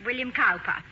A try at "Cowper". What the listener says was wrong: Cooper, darling. It is spelled Cowper, but pronounced Cooper.